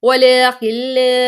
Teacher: پہلے کھڑا زبر لام کو کھینچیں گے, پھر آگے الف مد